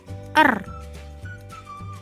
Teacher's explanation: konsonan apiko alveolar konsonan getar